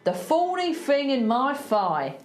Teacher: See if you can hear that TH becoming an F.